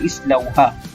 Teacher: Kalau huruf ketiga dia berbaris fathah, maka bacaan di hadapan sekali iaitu hamzah wasal perlulah berbaris kasrah, iaitu islauha.